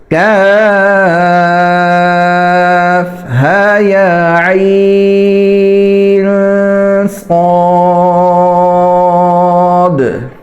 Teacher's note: نون عین کے آخر میں جو نون آ رہا ہے اس کے اوپر اخفاء کرنا ہے، یعنی آواز کو ناک میں چھپانا ہے۔